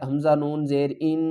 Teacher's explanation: نون پر ہم گنہ کریں گے، نون مشدد ہے